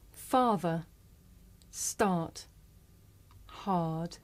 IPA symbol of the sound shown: a: